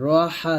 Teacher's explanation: আর এই হাটাকে যখন ধরবেন তখন একটু বাতাস বের করবেন। রহা জবর রহ চিকন করে আরাহ।